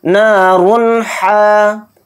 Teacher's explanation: را 2 پیش رن کہتے ہوئے جو اینڈ میں نون کی وائس آ رہی ہے اس کو ظاہر کر کے بلا غنہ کے جلد پڑھیں گے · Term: اظہار حلقی